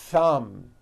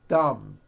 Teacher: you must stretch out the th sound and hear the air friction